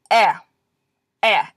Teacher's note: this is the vowel version without the Y sound in front